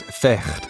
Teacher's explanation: In Dutch, fight is vecht, pronounced with a guttural sound. The GH in fight actually used to be pronounced the same way, but this sound has now disappeared, and no one bothered updating the spelling.